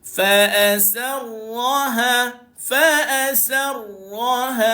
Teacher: Kita kena baca dia dalam keadaan getaran dia dibaca dengan diminimumkan bunyi getar